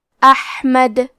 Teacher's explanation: یہاں حکم ہے مد صلہ کبریٰ تو ہم اپنی آواز 2 سے 4 مد کے برابر لمبی کریں گے من بعد اسمہ احمد. کلمت احمد میں ہا کی ادائیگی حلق کے درمیان والے حصے سے ہے، کیونکہ یہاں ہا ساکن ہے اور ہا بھی حروف الہمزہ میں سے ہے تو ہم یہ کلمہ کو ایسے پڑھیں گے احمد.